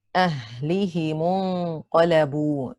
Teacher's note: Qaf has a fatha. The ghunna of the noon should be heavy because qaf is heavy. Qaf has a fatha, it is heavy on the second scale.